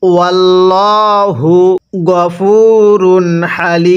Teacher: আল্লাহ শব্দের পূর্বে জবর থাকলে আল্লাহ শব্দটিকে মোটা করে পড়তে হয়